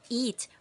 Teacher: notice how your mouth forms a smile when pronouncing this sound the tongue is high and towards the front